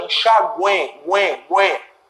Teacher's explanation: Isso aqui funciona como semivogal. Só que esse tritongo, ele tem uma sonoridade nasalizada. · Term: tritongo nasal